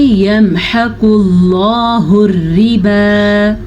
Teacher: قاف کو پر پڑھنا ہے اور لفظ اللہ سے پہلے پیش ہے تو لفظ اللہ کو بھی ہم پر پڑھیں گے. را باریک پڑھی جائے گی. را کے نیچے زیر ہے اور واو سائلنٹ ہے تو واو پڑھی ہی نہیں جائے گی.